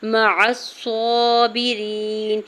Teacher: مع الصابرین، میم کی زبر کو جلدی سے ادا کرنا ہے، عین کے زبر کو صاد مشدد کے ساتھ ملاتے ہوئے پڑھنا ہے، صاد کے اوپر کھڑی زبر دو حرکت کھینچ کے ادا کریں گے، باقی زیر کو بغیر کھینچے ہوئے ادا کرنا ہے، یا ساکن سے پہلے را کے نیچے زیر ہے یا مدہ اور دو حرکت کھینچ کے ادا کریں گے، نون کے اوپر زبر ہے، آگے آیت کا وقف ہے، یہاں پہ وقف کرنے کی صورت میں نون کو ساکن کر دیں گے۔